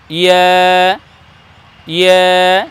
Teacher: জিহ্বার মধ্যখান আর তার বরাবর উপরে তালুর সঙ্গে লাগিয়ে বলবো ইয়া